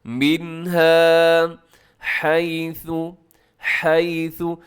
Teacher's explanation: منها، نون ساکن کے بعد ہا حروف حلقی میں شامل ہے، تو اس لیے آپ نے کیا کرنا ہے، یہاں پر اظہار حلقی کرنا ہے، مطلب غنہ نہیں کرنا، تیزی سے پڑھنا ہے۔ منها حیث، اسے حیثو نہیں پڑھنا، حیثو شیتم، یہ غلط ہو جائے گا۔